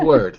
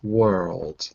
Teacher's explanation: it's an L but you don't make contact your tongue doesn't touch the normal spot where the L is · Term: soft L